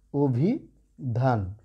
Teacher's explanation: এই অয়ের উচ্চারণটা কেমন হয়ে গেল, ও হয়ে গেল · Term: সংবৃত উচ্চারণ